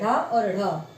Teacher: एकदम लुढ़क जाएगी झटके से जीभ नीचे चली जाएगी